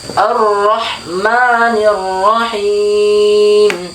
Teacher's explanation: apabila fathah ketemu ro yang bertasdid kemudian berharokat fathah, maka suara ro-nya ditebalkan